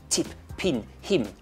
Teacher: the South African accent tends to hit its consonants very hard a bit machine gun like